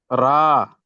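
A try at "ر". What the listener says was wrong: জি, রা হবে না, এটা হবে র। হবে, র।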